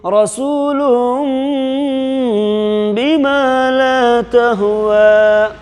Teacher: دو پیش کی تنوین کو میم سے بدل کر کے غنہ اور اخفا کے ساتھ پڑھیں گے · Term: اقلاب